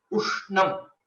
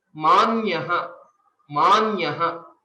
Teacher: there is a subtle extension of the previous letter, or you can think it as a small pause is there, so that the stress is given onto the Samyuktakshara.